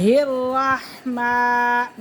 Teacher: میم کو ایک الف کے برابر کھینچ کے پڑھیں گے